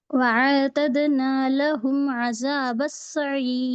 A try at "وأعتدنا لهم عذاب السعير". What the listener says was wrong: حمزہ الف مدہ بنا رہے ہیں آپ و آتدنا پڑھ رہے و عین سے عین پہ جزم ہے تو جزم سکون جی و اعتدنا و صرف عین لیجیے بس مدہ نہیں کرنا